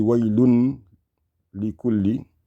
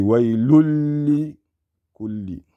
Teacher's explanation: Now we have to connect the dammatayni to what comes after it because it's going to be idgham. The lam came after the tanween.